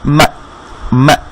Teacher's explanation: মিমের উপর ফাতহা, তার বামে হামজাতে সাকিন দেয়াতে এটা হামজাকে গিয়ে ধরে ফেলবে